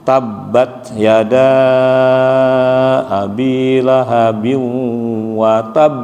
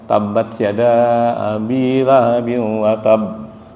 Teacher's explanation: pantulan di huruf ba itu di akhirnya itu kita pantulkan keras